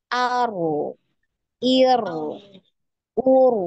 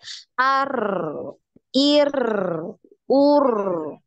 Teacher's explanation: Nah, jadi bukan getarannya yang dipanjangkan. Getarannya hanya satu, namun suaranya yang memanjang, yang mengalir ya. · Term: aliran suara